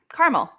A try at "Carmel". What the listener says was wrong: There's an extra A in there. The A ain't silent.